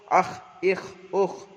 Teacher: খয়ের মাখরাজ জিবের কণ্ঠনালীর শেষ ভাগে হতে উচ্চারিত হয় খ